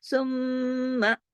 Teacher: پہلے ہی آپ نے غنہ کر لینا ہے پھر آپ نے میم کے ساتھ صرف زبر کو پڑھنا ہے